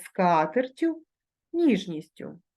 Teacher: якщо основа іменника у називному відмінку закінчується двома приголосними то в орудному відмінку однини подовження не відбувається